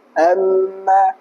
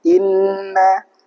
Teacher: nun atau mim ketika ketemu dengan tasydid itu makhrajnya keluar dari rongga hidung. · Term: gunnah